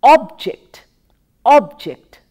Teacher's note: when we use it as a noun we pronounced with the stress on the first syllable